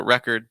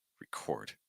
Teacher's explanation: You see another common example is like record versus record, where with record, the noun, you stress the first syllable, record, and then with record, the verb, you stress the second syllable.